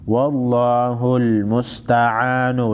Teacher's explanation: वल्लाहुल मुस्तआनु लफ्ज़ ला को मोटा पढ़ेंगे